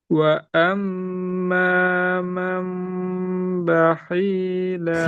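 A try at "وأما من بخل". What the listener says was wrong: Khi-nya pendek. Bakhila bakhila. Bakhila. Tambah dengung.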